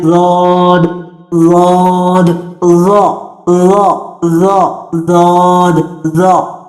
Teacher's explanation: जौद की अदायगी में जबान दांतों के पास हरगिज नहीं लानी। जबान को मैक्सिमम पीछे ले जाके उसे ऊपर वाली दाढ़ों के मसूड़ों के साथ लगाते हुए जौद को आपने अदा करना है